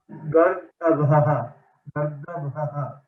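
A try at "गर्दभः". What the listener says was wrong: Right. Bha is mahaprana.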